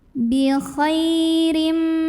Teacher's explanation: Khay di sini ada hukum lin, huruf lin. Karena ada ya sukun sebelumnya fathah, maka cara membunyikannya cukup dilembutkan atau dilunakan